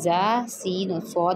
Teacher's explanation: ये सीटी वाले हरूफ भी हैं, इनको पढ़ते हुए सीटी की आवाज़ आनी चाहिए। ये जब ज़बान की नोक ऊपर और नीचे दोनों दांतों के अंदरूनी किनारों से मिलती है तो ये हरूफ अदा होते हैं और इनको अदा करते हुए सीटी की आवाज़ आनी चाहिए, इनको हरूफ सफीरिया भी कहते हैं।